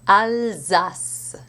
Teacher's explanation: And finally, one example of progressive voicing can be found in a place name, another place name, Alsace, where the S sounds like a Z, because of the voicing influence of the L that precedes